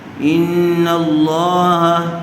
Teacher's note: لفظ اللہ کی لام سے پہلے والے حرف پر زبر آیا ہوا ہے، اسی لفظ اللہ کی لام کو پر کر کے پڑھیں گے۔